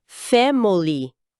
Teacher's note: Mas em inglês, soa quase como family. A vogal do meio praticamente some. Vira esse "a". · O I de family é reduzido a um schwa.